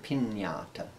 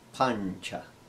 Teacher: the sound nya as in the spanish word pinata it's a little bit nasally sounding